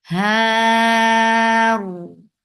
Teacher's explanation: This temporary sukun which we are giving because of the waqf on ra, this has changed this 2 counts long vowel into 4. That is making it mad arad sukun.